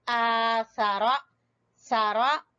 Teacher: आ को लंबा करना है और सारा छोटा पढ़ना है